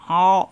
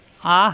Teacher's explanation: অ কণ্ঠনালীতে চাপ দিয়ে অ, আ হালকা, আর এখানে এসে চাপ অ ওয়া অ।